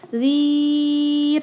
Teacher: Kalau dia wasol disebut dengan mad tabi'i yang dhi-nya ya. Kalau dia waqaf misalnya dhi itu dhir, baca aja 4 harokat ya mad arid lisukun.